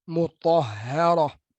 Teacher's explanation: Ta tebal, ha nipis, ra tebal. Jadi ha seorang di tengah-tengah tu nipis. Kiri kanan dia huruf tebal.